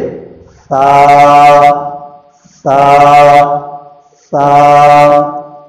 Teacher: سا میں نرمی کے ساتھ زبان کی نوک اوپر کے دانتوں کے کنارے سے ملنی چاہیے